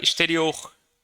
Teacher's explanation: O O é mais forte, tá, pessoal? A última sílaba é mais forte.